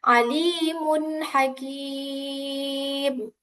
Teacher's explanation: Jadi tanwinnya harus dibaca jelas ketika bertemu dengan ha. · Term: izhar halqi